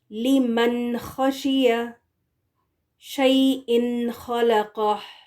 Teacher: ٹھیک ہے، تو اس صورت میں جب نون ساکن یا تنوین کے بعد حروف حلقی آ جائیں تو نون کی آواز کو کلیئرلی ادا کرنا ہے، پڑھنا ہے نون کو، لیکن نون کی آواز کو لمبا کر کے اس کا غنہ نہیں دیں گے